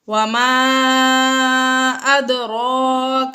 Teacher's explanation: حروف مدہ کے بعد حمزہ دوسرے کلمے میں ہے، مد منفصل ہوگا، تو اس کو 2، 2.5 یا 4 الف تک کھینچ کر پڑھیں گے۔ ادراک، اد دال میں حروف قلقلہ پر ساکن ہے، حروف قلقلہ ساکن ہے، اس لیے یہاں پر ہم نے قلقلہ ظاہر کر کے پڑھا۔